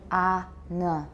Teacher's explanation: We don't even say a nasal at all, we just say ah.